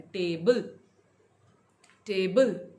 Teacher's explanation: मेरा जो स्ट्रेस है वो टे के साथ जाता है, टेबल, टेबल, राइट?